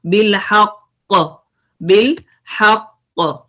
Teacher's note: قاف پہ شدہ ہے، اس پہ آپ نے پوز کیا تو قلقلہ ہوگا، قلقلہ کبرا یا اسٹرونگسٹ قلقلہ